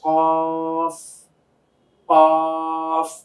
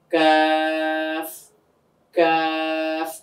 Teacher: কফটা আওয়াজটা একটু মোটা হয়, কাফটা একটু চিকন হয়, কিন্তু দুটার মাখরাজ প্রায় কাছাকাছি।